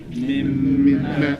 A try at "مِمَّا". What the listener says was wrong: So it should be short. Mimma. Doubling is going to not change, 2 counts, but because we don't have that elif after it, we're going to shorten what? The vowel. So we say mimma.